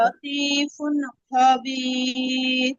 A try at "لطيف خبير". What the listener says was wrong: ল না আপু, লা লা লা লা। লাতিফুন খবির।